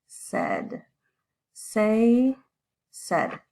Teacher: So this A-I, it actually sounds a lot more like an E, this short E sound.